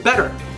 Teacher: we'll actually show that that T is a flap sound in there